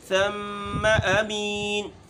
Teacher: ثا بھی باریک ہے، میم بھی باریک ہے